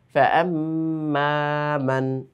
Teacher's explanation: প্রথমে গুন্না তারপরে আবার একটু টান রয়েছে মাদ রয়েছে